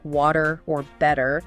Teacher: Americans often pronounce the T in words like water or better in a way that sounds almost like a d